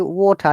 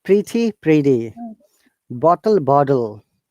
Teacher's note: in american english letter t sounds like d we call it flap t okay so whatever when we say water there's a water okay